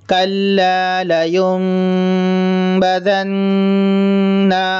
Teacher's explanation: نون مشدد ہے، غنہ کریں گے